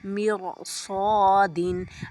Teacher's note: را ساکن سے پہلے کسرہ ہو اور ما قبل حروف مستعلیہ میں سے کوئی حرف اس کلمے میں ہو تو را پر ہوگی، جیسے مرصادن۔ را ساکن کے بعد صاد ہے نا حرف مستعلیہ میں سے، تو ہم را کو پر پڑھیں گے